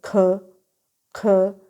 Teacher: आपको महसूस होगा कि सॉफ्ट पैलेट और व्हीलम जो है वो आपकी बैक ऑफ द टंग के साथ टच हो रही है। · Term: व्हीलर साउंड